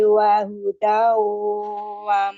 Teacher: Wahudau tanwin ketemu wawu itu idgham biguna dengan tingkatan gunahnya akmal matakun.